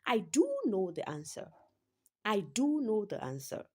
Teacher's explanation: In that sentence, do is stressed because the the writer is trying to say I do know the answer.